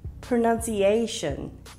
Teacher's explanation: the a sound is elongated in this word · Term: elongated vowels